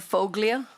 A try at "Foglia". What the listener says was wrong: Is pronounced folia. The G is silent.